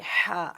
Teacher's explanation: حلق کا درمیانی حصہ ہا کا مخرج ہے